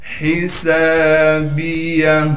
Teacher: حسابیہ، ہا کو صاف کر کے پڑھیں گے، گلے سے نکالیں گے، سین میں سیٹی ادا کرنے کے ساتھ سین کو ایک الف کی مقدار کھینچنا ہے